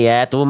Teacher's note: Ya-nya dibaca pendek karena fathahnya enggak ketemu sama a alif ya.